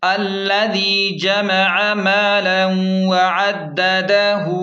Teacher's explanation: تشدید کی وجہ سے دال کو دبا کر پڑھیں، دال زبر د، دال زبر د، ہا الٹا پیش ہو، مالا وعددہ۔ الٹا پیش کو ایک الف کے برابر کھینچیں، اب ملا کر رواں پڑھیں، الذی جمع مالا وعددہ۔